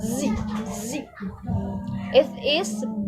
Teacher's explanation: So, it is voiced since like the sound of the letter Z feels like a vibration.